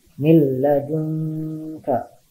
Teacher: Tulisannya min ladunka, tapi dibacanya milla, ya. Jadi huruf nunnya jadi hilang, lebur ke huruf lam. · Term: idgham bila gunnah